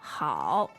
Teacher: it falls and then it rises but one of the really important things about the third tone is it has to hit that low Point